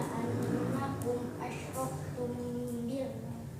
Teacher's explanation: mim sukun bertemu ba nunggu yang lama